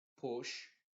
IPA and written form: pʊʃ (Push)